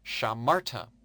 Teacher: Notice the accent on the second last syllable.